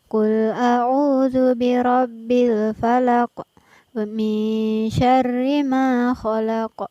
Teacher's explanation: di ujung setiap ayat dalam surah Al-Falaq ini diterapkan bacaan qalqalah